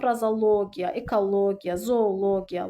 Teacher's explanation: Logi ilə bitəndə vurğu l hecasının üzərinə düşür. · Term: Logiya sonluğu, Logiya sonluğunda